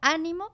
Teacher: ese ánimo lleva el acento en la primera sílaba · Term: esdrújulas